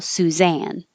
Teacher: then the stress is on the second syllable